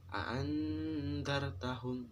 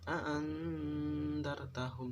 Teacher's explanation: Di sini samar di bibir. Adapun samarnya yaitu 1,5 alif atau 3 harokat. Kalau guru saya dulu sering bilang 3 harokat, yang dimaksud 3 harokat adalah 3 ketukan. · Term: ikhfa hakiki